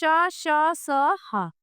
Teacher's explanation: कुछ व्यंजनों के उच्चारण में वायु तेज गति से मुंह के भागों से रगड़ खाती हुई बाहर निकलती है जिससे ऊष्मा उत्पन्न होती है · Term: ऊष्म व्यंजन